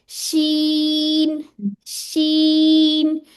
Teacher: इसमें showering sound आती है, ठीक है, तफशी भी कहते हैं उसको।